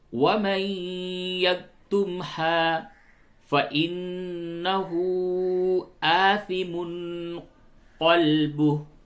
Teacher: نون ساکن کے بعد یا ہے، ادغام مع الغنہ ہوگا۔ وَمَن يَكْتُمْهَا فَإِنَّهُ آثِمٌ قَلْبُهُ، نون مشدد ہے، اس جگہ پہ غنہ کیجئے اور ہا کے اوپر آپ مد کیجئے، مد۔